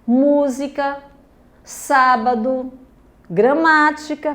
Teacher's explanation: palavras em que a sílaba tônica é a antepenúltima. E todas as proparoxítonas são acentuadas, tá bom?